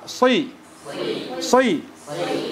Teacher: suaranya itu ada di tengah lidah sama langit-langit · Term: sifat itbaq